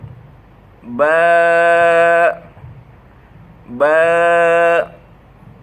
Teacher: এই ঠোঁটের ভিজা জায়গা থেকে বা উচ্চারিত হয় এবং পাতলাভাবে উচ্চারিত হয়। ঠোঁটের ভিজা জায়গা থেকে পাতলাভাবে বা উচ্চারিত হয়।